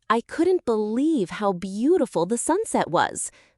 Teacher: You'll probably hear the voice rise slightly on couldn't, then rise more on beautiful, then fall on was. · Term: intonation